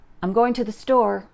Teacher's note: just say the word to in a sentence, it usually just sounds like ta.